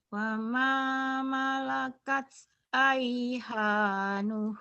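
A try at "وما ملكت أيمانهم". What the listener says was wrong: Aima bukan aiha. Ini mim. Kalau mim 2.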